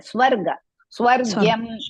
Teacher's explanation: Make sure that swa, not shwa.